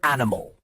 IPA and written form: ˈænɪməl (animal)